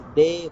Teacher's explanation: instead of diphthongs in the Sri Lankan variety, we have long vowels